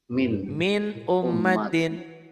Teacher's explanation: Idhar itu jelas. Jelas bunyi n-nya dengan tidak memakai gunnah, tidak ada dengungnya.